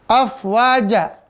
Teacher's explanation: Afwaja, fa sama kayak ini. Ya, ujung ujung gigi seri atas, bibir bawah bagian dalam, sifatnya tipis, napas berhembus